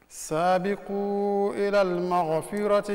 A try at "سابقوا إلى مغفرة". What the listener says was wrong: there is no alif and lam before المغفرة so it is سابقوا إلى مغفرة